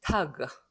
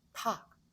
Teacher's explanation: 이 그가 독일인 입장에서는 무성음화 되고 있는 거예요.